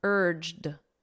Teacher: so it ends on a very soft D sound